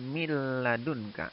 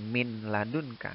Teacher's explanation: atau nun sukun bertemu nyelang nyelang jadi cara membacanya mil ladunka Nun nya ya dileburkan dimasukkan ke suara lam · Jadi bukan min ladun kak, tapi miladun kak ya, nun sukunnya dileburkan ke suara lam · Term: idgham bila guna